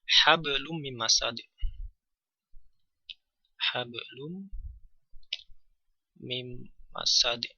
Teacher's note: gunah atau dengan dengung Gunah artinya dengung Nah gunah ini ee kita artikan sebagai bunyi yang melalui rongga hidung atau khaisum dengan panjang ee kira-kira 1,eng alif atau 3 harakat Saya mengambil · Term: gunnah